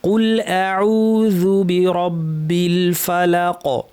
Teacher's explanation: শেষে একটু বাউন্সের মতো, একটা ধাক্কার মতো, এটি হচ্ছে কলকলা